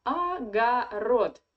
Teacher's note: The first two o you read like a. Agarod. Because only the last one is under the stress.